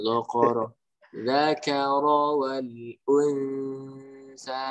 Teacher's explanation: Kayaknya tetap tipis, tapi ro-nya tebal. Jangan ikut tebal semua.